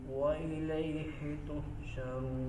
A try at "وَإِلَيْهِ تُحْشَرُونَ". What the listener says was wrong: ही नहीं करना. हमजा को वाज़े करके पढ़.